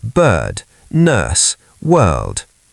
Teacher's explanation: British long smooth sound without any R. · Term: nurse vowel